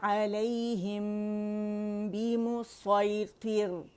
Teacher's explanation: اور را جو ہے یہاں پہ ترقیق کے ساتھ پڑھی جائے گی کیونکہ مرقق ہے, اور ہم نے کیونکہ را ساکن کیا ہے اس سے پہلے ہمارے پاس کسرہ آ رہی ہے تو باریک پڑھی جائے گی, لیکن تو کی موٹائی قائم رہے گی.